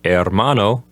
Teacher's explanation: the H at the beginning is silent